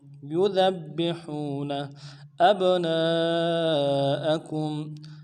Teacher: حمزہ کو با ساکن کے ساتھ ملانا ہے، با جب ساکن ہو تو قلقلہ ہوگا، قلقلہ کریں گے۔ اب نون کو نرم سے پڑھیں گے، نون کے بعد الف مدہ، الف مدہ کے اوپر مدہ اصلی ہے، دائٹین الف مدار میں کھینچیں گے۔